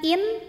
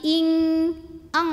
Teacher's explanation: nun mati kalau ketemu Kaf bacanya bukan in tapi ing eng langsung jadi ini disamarkan ke Kaf sudah menyentuh